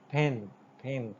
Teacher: This per sound in the word pin is actually aspirated sound